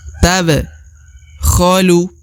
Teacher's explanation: huruf ba berharakat sukun maka dibaca pantul atau diqolqolahkan atau dipantulkan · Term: huruf pantul